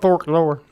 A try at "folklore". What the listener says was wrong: no L. Drop the L. Folklore. folklore.